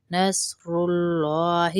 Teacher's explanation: لام کو موٹا پور پڑھیں گے کیونکہ اللہ کے لام سے پہلے پیش ہے